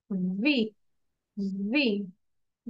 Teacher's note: সে টিচার ওকে ঠিক আছে সো টিচটা S T U ভি একটু ভাইব্রেট হবে কম্পন হবে এবং বাতাস বের হবে